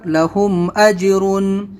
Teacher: جیم کے اوپر جزم ہے تو یہ قلقلہ حرف ہے تو اس کو ہم قلقلہ کریں گے